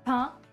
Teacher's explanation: pain, you do not hear the final N. It's not like pain in English.